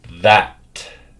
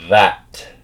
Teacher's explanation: That. See how we have our voiced th sound followed by the voiceless t sound